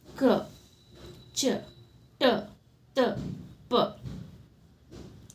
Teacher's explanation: ಕಡಿಮೆ ಉಸಿರಿನಿಂದ ಉಚ್ಚರಿಸಲಾಗುವ ವ್ಯಂಜನಗಳು ಅಲ್ಪ ಪ್ರಾಣಗಳು